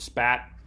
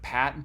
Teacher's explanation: So the P phoneme is unaspirated after S · the p phoneme is unaspirated after s like in the word spat uh but if we pronounce p at the beginning of a word like pat then it is aspirated